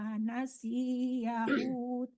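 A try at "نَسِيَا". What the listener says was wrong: Jangan nasi yahu yang panjang tuh ya, bukan sinya ya.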